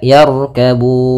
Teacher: pada lafal Bun di situ ada bacaan Mad Alif di sukun kita boleh memanjangkannya dua harakat empat harakat ataupun enam harakat